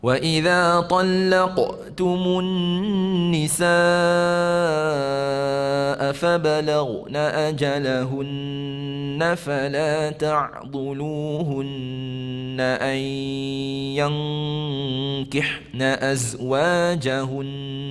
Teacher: Perhatikan nun sabdu. Nun sabdu kemaskan dengung kita di situ.